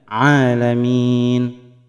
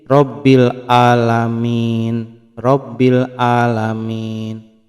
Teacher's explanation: Kemudian pada lafaz Rabbil Alamin itu dibaca dengan huruf ain ya, alamin. Huruf ain ada pada makhraj wasatul halqi